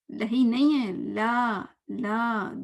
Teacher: لا کو ہم نے 2 حرکت تک کرنا ہے کیونکہ کھڑی زبر ہے